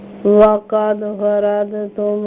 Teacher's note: वक़द दाल पर क़लक़ला करेंगे